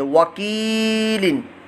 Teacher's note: کاف کے نیچے زیر ہے اور آگے یا ساکن ہے، تو یا ساکن سے پہلے زیر ہو تو یا مدہ، تو یہاں کاف کو لمبا کریں گے